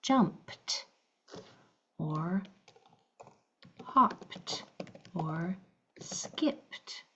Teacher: P. So the E d is going to make its voiceless sound. T.